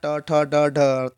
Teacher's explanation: मूर्धन्य में ट ठ ड ढ है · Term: मूर्धन्य ध्वनि